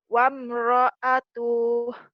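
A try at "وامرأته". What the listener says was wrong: Wamra'atuh. Pendek ya. Wamra'atuh.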